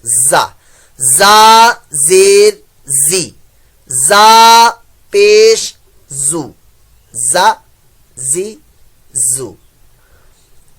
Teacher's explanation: یہاں پر زا میں سی ٹی کی آواز آئے گی، سفیریہ لیٹر میں سے ہے تو یہاں پر اپنا شوق سی ٹی والا پورا کر لیجئے سی ٹی کی آواز کے ساتھ.